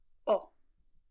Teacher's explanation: it's a short open Sound